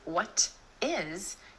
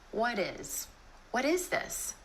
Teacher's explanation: Instead of a true T, what Is, you're going to put in that D sound or flap T